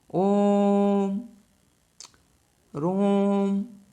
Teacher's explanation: जिसमें लंबे समय तक जब तक सांस रहती है तो यह जो है पुलत स्वर होता है